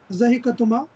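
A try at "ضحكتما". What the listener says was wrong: کاف کے اوپر سکون آئے گا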